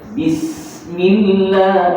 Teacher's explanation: Sofir ni sifat berdesir, dia berkekalan.